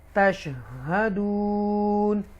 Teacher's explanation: انتم تشہدون مد عارض کے ساتھ دون ادا کی جائے گی